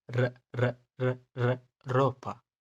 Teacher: हम इंग्लिश के अंदर आर को रोल करके बोलते हैं, इसको रो कहते हैं, लेकिन स्पेनिश का आर को हमको डी की तरह प्रोनाउंस करना है, इसको एज अ डी की तरह प्रोनाउंस करो, जैसे र, हमारी टंग अपर टीथ के पीछे जाएगी तो ये र साउंड देगा